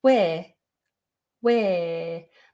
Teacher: just go for where where but don't pronounce the letter r don't try and do where or anything like that just where